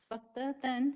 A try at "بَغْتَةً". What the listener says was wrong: یہ تے پہ زبر ہے یار، تو ہمیشہ اس کو کھڑا الف پہ پڑھتے ہیں. بغتتاً، ہاں بغتاتاً نہیں.